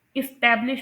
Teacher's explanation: इसे जो है ना इस्टेब्लिश प्रोनाउंस करते हैं, यहाँ पर ई की साउंड आएगी। और फिर उसके बाद इसमें कौन सा सेलेबल अनस्ट्रेस्ड है, फर्स्ट सेलेबल इस, वो अनस्ट्रेस्ड है, उस पर स्ट्रेस नहीं आ रहा, उसकी ड्यूरेशन भी शॉर्टर है और ना इतना एम्फोसिस प्रोड्यूस हो रहा है इसको प्रोनाउंस करते हुए।